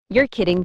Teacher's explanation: add a little rise in your tone at the end